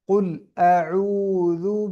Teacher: ذال کو نرم اور باریک